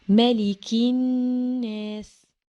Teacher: كلمة الناس النون مشددة، لازم تنطق مشددة، يعني ما ينفعش أقول ملك الناس، لازم أقول ملك الناس.